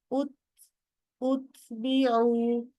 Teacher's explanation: আগে তাটা শার্প করে সাউন্ড করো উত, তারপরে হালকা করে নিঃশ্বাস ছাড়বেন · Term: হুইসপারিং সাউন্ড